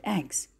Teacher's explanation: So basically the word egg, it ends in g, and when it is in the plural we are going to add s, which is pronounced z. So in this case g is final and z is postfinal.